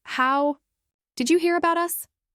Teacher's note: Use a falling tone on us. That drop in pitch makes the sentence feel finished and clear.